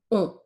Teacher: a more rounded sound, okay, where you really round your mouth, but then it comes through the nose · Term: nasal sounds